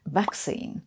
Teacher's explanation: Or they have a somewhat different emphasis, like vaccine, which in American English has the emphasis on the second syllable, whereas in British English it's vaccine, with the emphasis on the first syllable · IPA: /ˈvæksiːn/